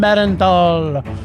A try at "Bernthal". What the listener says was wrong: I think that's Bernthal. You're putting Too many syllables, man.